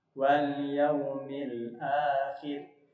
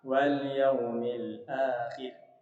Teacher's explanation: Ra di sini jadi tipis karena huruf sebelumnya dia berbaris kasrah ya. Wal yaumil akhir, tidak boleh dibaca wal yaumil akhir, tidak boleh, tapi tipis.